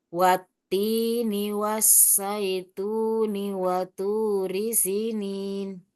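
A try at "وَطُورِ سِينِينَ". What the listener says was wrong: Jangan sinin, sinin tapi si dua harokat. Gitu. Coba ulangi. Digabung digabung. masih sinin. Waturi sinin. Si diain boleh. Sinin.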